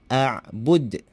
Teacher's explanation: Huruf hamzah dahulu kita sebut, baru kita sebut huruf ain, a'bud.